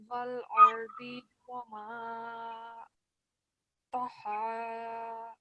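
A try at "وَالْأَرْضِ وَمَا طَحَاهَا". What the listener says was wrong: So to, not ta. Ta would be yes, here we have ta. So it's when we're pronouncing ta, it's like when we're smiling. So ta, okay. But to is when we round our mouth.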